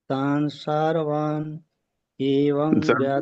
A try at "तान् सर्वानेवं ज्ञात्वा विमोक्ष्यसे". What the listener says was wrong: सर्वान क्यों बोलते हैं? सर्वान कहाँ है यहाँ? तान सर्वा बोलिए। तान सर्वा